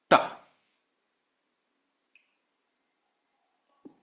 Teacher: So you place the tongue directly at the teeth. That's why they are called dantia related to the teeth.